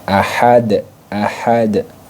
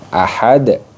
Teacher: ahadun di sini dibaca Qalqalah Kubro jadi Dal sukunnya dipantul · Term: qalqalah kubra